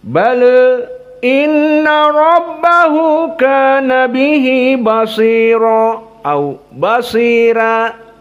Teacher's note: Dan sebagian dari Wars dibaca dalam keadaan taklil.